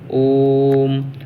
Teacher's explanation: तो देखिए ओम को कितना लंबा खींचा ओ को, तो इसमें ज़्यादा समय लग रहा। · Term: प्लुत स्वर